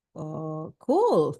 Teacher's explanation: When you say like, cool, yeah, that means, oh, with the rising intonation, it means like excitement, I mean happy or amazed probably